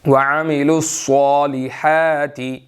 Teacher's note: یہاں پر صاد موٹا ہے، اس کو ہم نے موٹا ادا کرنا ہے